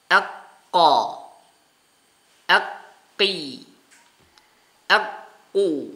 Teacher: huruf qaf keluar dari pangkal lidah bagian belakang. Bagian belakang.